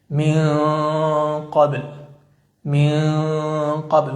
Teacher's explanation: ومع القاف تكون غنة مفخمة قريبة للإظهار.